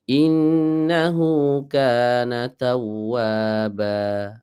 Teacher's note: ini kalau dalam ilmu tajwid masuknya ke dalam mad iwad Ya Mad iwad ini panjangnya 2 tidak boleh lebih dari dua